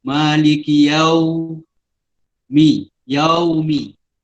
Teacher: Yaumi tu kena maklin, kita kena muncungkan mulut ke depan.